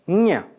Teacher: In this group, last letter Nya is voiced velar nasal articulated by allowing airflow through the nasal cavity while the back of the tongue contacts the soft palate